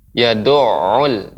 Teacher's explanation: Tinggal catatannya tadi ini pengucapan ain, ya. Ain yang bertasydid, dia tidak berhenti suaranya.